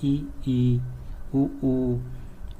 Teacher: संवृत। इनमें मुख लगभग बंद रहता है